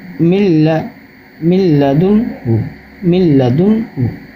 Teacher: اب لام کا ادغام پڑھیں، میم کو لام سے ملانا ہے